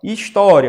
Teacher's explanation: História, por exemplo, a sílaba tônica é o tó e termina em ditongo, ó. O I e o A, que é um ditongo crescente, né?